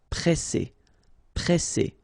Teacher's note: you've got this double S, then it will open the sound of your E and you will get E.